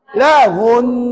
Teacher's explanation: Jadi bila wakaf jim, yang baris ni tak boleh baca. Kamu jangan baca baris, sebaliknya kamu matikan nun tersebut.